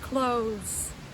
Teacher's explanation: everything counts as close c-l-o-t-h-e-s close so if you notice there there's a th in that word but we don't pronounce it like we usually do it's tricky it's just close like an s sound instead of a th sound